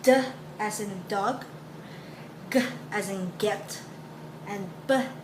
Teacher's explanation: these are your voiced plosive sounds